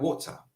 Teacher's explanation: in the British dialect, sometimes the R disappears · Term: non-rhotic R